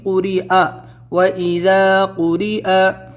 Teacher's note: حمزہ کو یہاں پہ پڑھیں گے، اس کے اوپر زبر ہے، قوری یا کی آواز نہیں نکلے گی